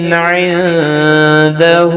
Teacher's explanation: نون ساکن کے بعد حروف اخفا کا دال اخفا حقیقی ہوگا ، ہا کے اوپر الٹا پیش ہے، ایک الف کی مقدار